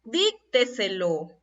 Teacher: Son palabras que llevan la mayor fuerza de voz en la anterior de la antepenúltima sílaba. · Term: sobresdrújulas